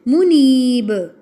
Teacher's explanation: منیب با پہ قلقلہ کرتے ہوئے وقف کرتے ہوئے